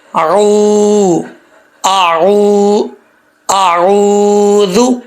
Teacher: یہ واو مدہ ہے، 1 الف کی مقدار اس کو کھینچیں گے